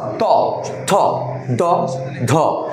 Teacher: সবগুলো দাতের সাথে লাগছে তাই নাম হচ্ছে দন্ত ধ্বনি